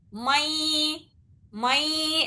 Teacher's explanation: یا آ رہا یہاں پر نون ساکن کے بعد، تو نون کی آواز یا میں ملانا ہے اور دو حرکت غنے کے ساتھ اسے ادا کرنا ہے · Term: ادغام ناقص